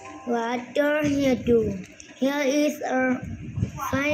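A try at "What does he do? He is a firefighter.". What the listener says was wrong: Mình sẽ không đọc là here.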